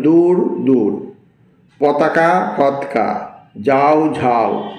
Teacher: অল্পপ্রাণ ধ্বনি মহাপ্রাণ ধ্বনি রূপে উচ্চারিত হয়